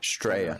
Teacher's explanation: They forget the Oz part and the L as well. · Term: Strayan